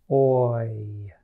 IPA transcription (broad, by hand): oɪ